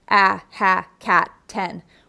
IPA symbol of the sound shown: æ